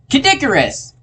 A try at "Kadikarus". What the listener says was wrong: Why did you say it like it was one word?